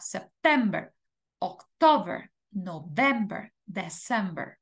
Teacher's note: en el caso de septiembre octubre noviembre y diciembre la sílaba tónica en inglés es la segunda